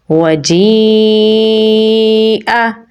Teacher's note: اوپر بڑی مد ہے تو اسے ہم 4 سے 5 سیکنڈ لمبا پڑھیں گے تو پڑھا جائے گا وَجِیءَ۔